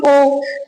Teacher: मुंह तो गोल हो रहा है, मतलब होठ तो गोल हो ही रहे हैं, गले में से और आवाज निकल रही है, तो इसे हम बोलेंगे कंठोष्ठ, ठीक है।